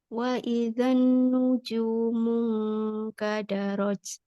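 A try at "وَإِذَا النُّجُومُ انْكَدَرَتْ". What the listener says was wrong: Tahan sedikit gunahnya pada nun yang bertasdid.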